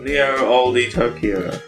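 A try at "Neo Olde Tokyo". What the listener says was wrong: Old Tokyo. You don't pronounce the extra E.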